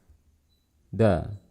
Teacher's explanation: di lafal keluarkan dialirkan dan dilafalkan hurufnya bersamaan beserta harokatnya jadi kita tempelkan lidah kita di gusi atas gusi gigi seri atas misalkan dalam berharakat fathah kita rasakan dan beserta harakat fathahnya langsung